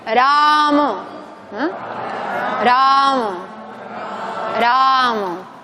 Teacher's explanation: La R no es Rama, es Ra. Y cuidado aquí porque la primera es una vocal larga, pero la segunda es breve.